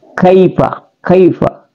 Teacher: hurufnya itu pangkal lisan pangkal lisan pangkal lidah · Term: huruf k